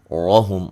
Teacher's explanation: ہا کو اس سے مخرج سے نکالیں گے جو کہ وسط حلق ہے